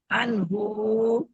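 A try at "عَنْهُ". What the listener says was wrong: হ্যাঁ এই যে আনহু আনহু টান হবে কেন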